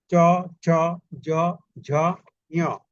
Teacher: চ ছ জ ঝ ঞ, এই সবকটা বললে জিহ্বার অগ্রভাগ দিয়া উপরের তালুর সাথে যে মানে একটু টাচ পায়, টাচ পাওয়াটাকে বলছে যে ঘর্ষণ বলছে এখানে, ঠিক আছে? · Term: তালব্য স্পর্শ ধ্বনি